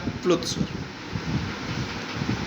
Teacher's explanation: प्लुत स्वर वह स्वर वर्ण होते हैं जिनके उच्चारण में दीर्घ स्वर से भी अधिक समय लगता है, उन्हें प्लुत स्वर कहा जाता है।